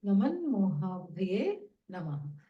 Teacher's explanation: it nasalizes, takara becomes nakara because makara follows